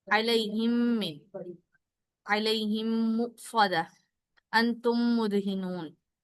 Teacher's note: मीम का पहला कायदा है इदगाम। मीम साकिन के बाद जब मीम मुतहरिक आ जाए तो उसमें इदगाम होगा, और उसमें गुन्ना भी जरूरी है।